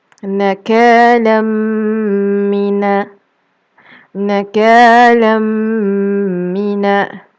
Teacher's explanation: Tanwin bertemu dengan mim. Jadi kita masukkan tanwin ke dalam huruf mim. Maka dia akan berbunyi nakalam mina. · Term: idgham ma'al ghunnah